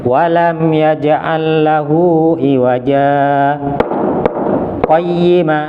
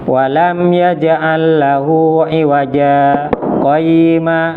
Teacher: Berhenti wakaf ini aslinya kan iwajan. Ketika berhenti jadi iwaja, dibaca panjang 2 harokat, tanwinnya hilang tapi tidak bernafas. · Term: saktah